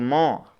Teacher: जैसे म, तो आपको होठ के बिना आप केवल नाक से नहीं बोल सकते